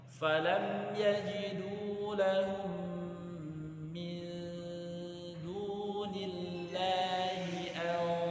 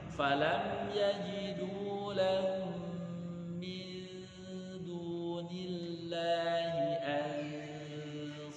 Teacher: Kalau di sini nun mati dengan shad, maka tebalkan nunnya. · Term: ikhfa tafkhim